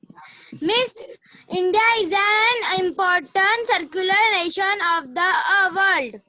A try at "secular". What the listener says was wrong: You are correct, but the pronunciation is wrong. It's not circular, it's secular. Repeat after me. Secular. SECULAR. Secular.